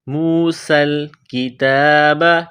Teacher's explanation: سین میں سیٹی کی آواز پیدا کرنی ہے، سین کو باریک کرنا ہے